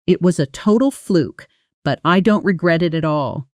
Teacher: Don't regret it at all compresses heavily in fast speech. The T sounds almost disappear, blending into something closer to don't regret it at all. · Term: soft, quick T